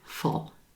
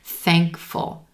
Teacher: We have the F and L sound almost like they're smushing together